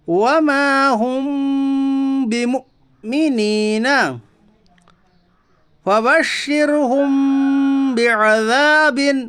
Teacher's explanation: ساکن کے بعد با ہے اس لیے اخفاء شفوی ہوگا یعنی میم ساکن کی آواز کو ناک میں چھپا کر غنہ کے ساتھ پڑھیے